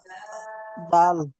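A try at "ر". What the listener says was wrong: র, দাল না র।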